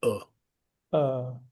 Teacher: गले के सबसे बॉटम पार्ट से निकलता है